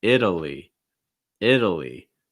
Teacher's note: short i sound fast d sound schwa sound and an ending with a long i sound